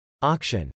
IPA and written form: ˈɑkʃən (auction)